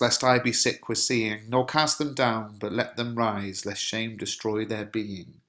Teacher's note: you've got a rhyme of stressed syllables followed by unstressed syllables